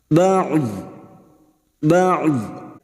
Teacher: tepi lidah nempel pada gigi geraham atas, boleh kiri boleh kanan, maka bunyinya ba'd. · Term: huruf dhad